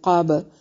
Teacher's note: क़ब बा पे कलकला होगा क्योंकि बा हरूफे कलकला में से है।